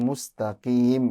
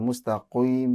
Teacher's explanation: qaf kalau kasroh juga tipis ya.